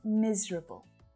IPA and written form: 'miz rə bl (MISERABLE)